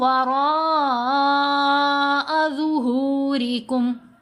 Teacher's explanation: را کے اوپر یہ جو مد ہے مد متصل ہے، اس کو ہم نے 5 حرکات کی مقدار لمبا کرنا ہے۔ مد کا مطلب ہوتا ہے لمبا کرنا، متصل کا مطلب ہوتا ہے جڑا ہونا۔